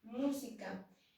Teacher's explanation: son palabras cuya sílaba tónica está en la antepenúltima sílaba. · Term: esdrújulas